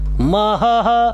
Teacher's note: किं महः महः, 2 ह बनेंगे, एक तो ह है ही एक विसर्ग का